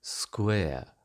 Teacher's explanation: the diphthong in square was a bit more closed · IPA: eə